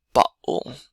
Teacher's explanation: It's almost like the air in your back of your throat did like a 90-degree turn from going up to then going sideways. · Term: glottal stop